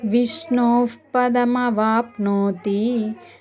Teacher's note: 'విష్ణో' తర్వాత విసర్గ ఉండి, దాని తర్వాత ' ప' వస్తుంది కాబట్టి, దానిని కూడా 'ఫ' గానే ఉచ్చరించాలి